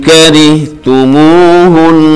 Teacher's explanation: ri-nya ini tarkik karena ra berharokat kasrah